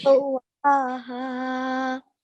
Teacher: make sure to prolong the vertical fatha for 2 seconds.